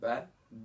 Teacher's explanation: با میں نے کس طریقے سے ادا کیا تھا، دونوں ہونٹوں کو ملا کر سختی سے